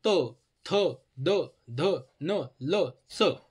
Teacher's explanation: त म्हणताना आपलं काय होतं? जिभेचा शेंडा दातांना स्पर्श करतो म्हणून त्याला दंत्य म्हणायचं. जिभेचा, आता तुम्ही म्हणून बघा, त म्हणा, त म्हणलं तर आपल्या दाताच्या मागच्या बाजूला ना आपली हे जीभ लागते म्हणून म्हणायचं त्याला दंत्य.